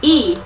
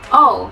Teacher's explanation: if we pronounce the vowel E, my lips is not round, so the sound E is unrounded. And then when I pronounce about O, we can see that my lips is round. That's why the sound O is rounded.